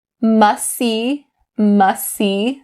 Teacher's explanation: you can either drop the t sound or stop the t most people decide to drop the t sound because it's a lot easier